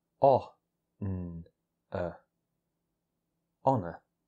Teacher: So the H is completely silent, and in standard British English, so is the R.